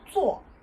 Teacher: the tone is a fourth tone. So you sound a little angry when you're saying 做. And it's very abrupt. So don't elongate the sound.